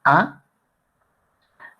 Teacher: Si nosotros pronunciamos la a la lengua se queda al centro y abajo entonces la a es baja central